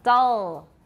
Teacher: You don't even have to put your tongue tip on your alveolar ridge for a dark L.